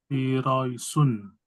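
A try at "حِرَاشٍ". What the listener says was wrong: Shun. Shun. Anginnya yang keluar lebih deras, Pak. Shun.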